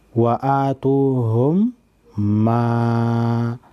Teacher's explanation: मीम साकिन के बाद मीम आए तो दोनों को मिलाकर गुन्ना के साथ मुशद्दद अदा करेंगे। मसलन व आतूहुम मा, इसको इदगामी शफ़वी कहते हैं।